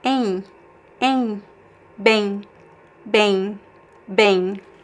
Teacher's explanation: And we also make like a diphthong here. Em, Em, there's no m sound at the end